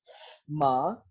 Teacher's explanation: तो अब अगर हम लोग इन साउंड्स की बात करते हैं जो कि हमारी नेजल साउंड के तौर पर देखी जाती है, तो we have three nasal sounds. It's म, लेकिन ये म जो है वो बाइलेबियल भी है